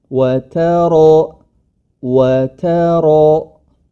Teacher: ta tetap ta diistifalkan atau tidak ditebalkan ya tipis saja wata wata kemudian ketika masuk ro baru rnya yang tebal